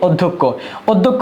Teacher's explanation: আবার উচ্চারণের ক্ষেত্রে এটা হবে ক এবং খ। মধ্য যখন শব্দের মধ্য যখন থাকবে বা শেষে যখন থাকবে এই খির উচ্চারণ হবে ক এবং খ একটা অল্পপ্রাণ ক আরেকটা হলো মহাপ্রাণ